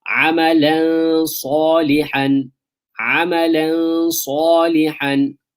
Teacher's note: You're gonna do ikhfa of the tanween. So it's not gonna be amalan, not clear. It's gonna be hidden almost.